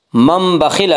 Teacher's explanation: नून साकिन को मीम से बदल कर गुन्ना के साथ पढ़ेंगे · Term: कल्ब